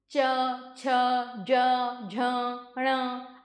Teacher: च से ण तक के व्यंजनों को शामिल किया गया है इसका उच्चारण स्थान तालू है तालू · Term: च वर्ग